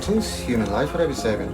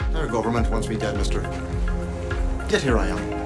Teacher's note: strategy for an Irish accent was apparently to just stop using his vocal cords. He whispers everything, like he's afraid a real Irishman might hear him and call the guards.